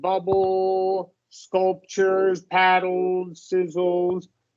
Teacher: Trying to do that dark L, and we can go with a schwa L or a lax short U.